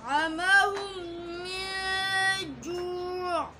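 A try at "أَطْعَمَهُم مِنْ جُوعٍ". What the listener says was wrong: ज़्यादा ज़ोर नहीं पैदा करना है, अपनी आवाज़ से पढ़ना है, ज़्यादा सख्ती से अतअमहुम इस तरीके से नहीं। अतअमहुम मिन जू'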